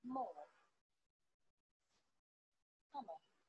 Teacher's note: I make this sound by closing my lips and letting the sound come from my nose. I can even feel my lips vibrating.